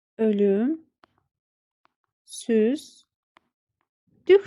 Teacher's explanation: Lük şəkilçisi düh şəklində tələffüz olunur.